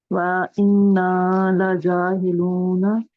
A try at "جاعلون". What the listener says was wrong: وَإِنَّا لَجَاعِلُونَ. عین ہیلون نہیں ہے.